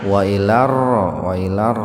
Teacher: Wa ilar alif lam samsiyah atau idgham samsiyah. Jadi membacanya langsung dimasukkan ke ro, lamnya diabaikan saja.